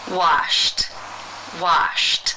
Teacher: the final sound in infinitive form is the unvoiced sh sound since it is unvoiced it is case 1 where the Ed is pronounced as a t